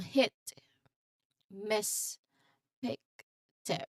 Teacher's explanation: Now, it is a visual of the mouth shape for this sound where the lips are a bit more relaxed compared to the wide smile for E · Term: short monophthong